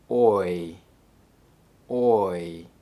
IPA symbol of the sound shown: ɔɪ